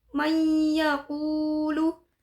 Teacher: idgham bigunnah, yaitu nun sukun bertemu dengan ya. Cara membacanya adalah memasukkan dengan mendengung, dan mad tabi'i pada huruf qaf berharokat dhammah bertemu dengan wawu.